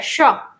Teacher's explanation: जब हम बोलते हैं तो तालव्य से ध्वनि निकलती है।